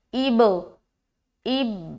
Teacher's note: حمزہ با سے مل رہا ہے اور ملنے کے بعد جدا بھی ہو رہا ہے, جس صورتحال میں قلقلہ پیدا ہو رہی ہے